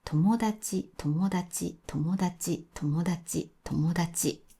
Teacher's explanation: 友達は友達です。最初が低くて、もで上がって、そのまま高いままです。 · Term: ピッチアクセント